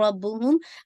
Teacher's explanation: रा को हैवी, बा को ट्वाइस हिट कीजिएगा, मीम पे नाक़िस गुन्ना